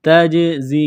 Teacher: یوم لا تجزی، تا کو جیم کے ساتھ پلس کرنا ہے، جیم ساکن ہے تو یہاں پر قلقلہ کریں گے